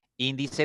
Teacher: la tercera sílaba tercera sílaba por ejemplo dice índice tiene tres sílabas la mayor fuerza contando derecha izquierda está en la tercera sílaba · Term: palabra esdrújula